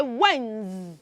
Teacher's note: note that that word has a silent letter D. So you're not going to say D.